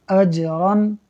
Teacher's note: جیم حروف قلقلہ میں سے ہے، ساکن ہے، خوب قلقلہ ہوگا، آواز پلٹ کر آئے گی